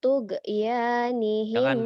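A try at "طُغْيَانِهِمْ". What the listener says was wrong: G-nya jangan tuge, itu mau kayak orang Sunda. G-nya pecah. Jangan tugu, tugu Monas. Iya memang G, tapi G Arab itu bukan G, tugu.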